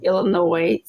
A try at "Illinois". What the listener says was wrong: Illinois with no S.